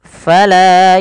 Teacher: Fala, panjangkanlah 2 harakat karena ia mad tabi'i.